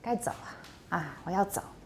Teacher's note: the 3rd tone doesn't rise